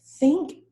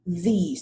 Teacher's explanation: think would be a voiceless sound of th, and these would be voiced.